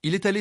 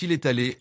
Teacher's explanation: il est allé se prononce allalé en un seul bloc sonore continu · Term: enchaînement consonantique